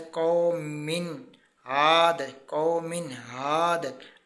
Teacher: इजहार करना है, ज़ाहिर करके पढ़ना है, गुन्ना नहीं करना